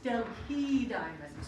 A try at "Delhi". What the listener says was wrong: No, it's a silent H. It is pronounced Delhi.